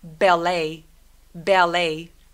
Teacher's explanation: 끝날 때 T 소리 내지 않고 lay라고 소리 냅니다. 대신 입술 다물어서 ballet.